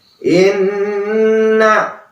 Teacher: Gunnah, ya, dia memiliki hak untuk dua harokat, ya, jangan terburu-buru.